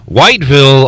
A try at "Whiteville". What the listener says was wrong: It's like Wideville is how people pronounce it.